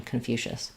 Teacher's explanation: second syllable stress, we have the reduced vowel here, so it's going to sound like kun, or there will be a little schwa there, kun.